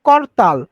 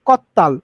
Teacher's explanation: করতালের র কিন্তু উধাও হয়ে যাচ্ছে কি কত্তাল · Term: পরাগত সমীভবন